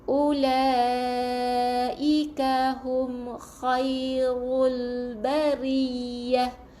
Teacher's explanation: Bari kena ya 2 huruf. Ya yang pertama, ya yang mati, ya yang kedua baris atas kena tekan